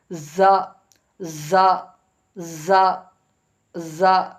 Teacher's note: இந்த பல்லும் இந்த பல்லும் மேல நடு பள்ளம் கீழ் பள்ளம் நடுவுல ஜா அந்த ரெண்டு பல்லுடைய நடுவுல அந்த நுனி நாக்கு டச் ஆகும் பொழுது ஜா ங்குற எழுத்து வெளியாகும்